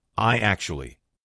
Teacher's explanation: So when you've got I actually, how are we going to link that? What we're going to put in the middle is we're going to put a Y sound.